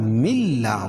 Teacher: लाम है तो यहां इदगाम करेंगे लेकिन गुना नहीं होगा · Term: इदगाम बिला गुना